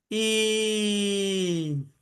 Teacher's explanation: मुझे उसका दीर्घ दो मात्रा का उच्चारण करना है, तो मैं ई, मैंने दीर्घ उच्चारण किया, दो मात्रा तक उसका समय गया। ई, मैंने तीन मात्रा तक उसका उच्चारण किया, तो वो प्लुत बन गया